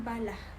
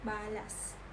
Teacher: digantikan dengan penggunaan konsonan geseran glotis tak bersuara h